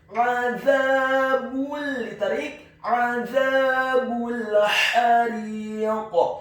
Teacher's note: Huruf za-nya dibaca tipis, tarqiq, lidahnya agak keluar sedikit, fathah 2 harokat karena setelahnya ada alif.